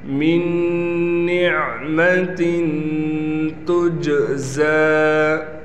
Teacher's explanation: یہاں پر نون پر غنہ کرنا ہے، اس نون کو ہم ختم کر دیں گے، اس میم کو ڈائریکٹ اس نون سے ملائیں گے، اس کو ادغام کا قاعدہ کہا جاتا ہے۔